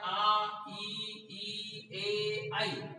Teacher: उच्चारण में होठ गोल नहीं होते हैं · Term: अवृत्ताकार